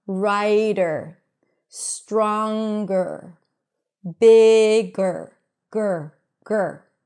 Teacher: A schwa is a very neutral vowel sound, and when it's connected to an R right after, then the R eats up the schwa, and you just hear an R. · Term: schwa R